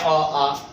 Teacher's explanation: सबसे पहले अ कहने से अ भी बोलेंगे और इसका स्वजातीय वर्ण एक आ बोलेंगे, तो इसमें आ गया अ आ। इसका मतलब अ आ का उच्चारण जो होता है कंठ से होता है, इसलिए अ आ को कंठ्य वर्ण कहते हैं